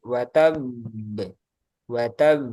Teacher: untuk suara qalqalah yang hurufnya tasdid itu sedikit ditekan. Terus dikasih jeda sebentar.